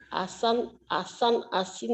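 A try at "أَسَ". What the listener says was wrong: Asan. Jangan ason. Asan. Bunyi A. Ujung lidah. Cadal. Asan, asin, asun.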